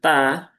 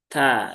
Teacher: Huruf ta itu dia ada hamsnya ya, baik ketika sukun ataupun ketika berharakat.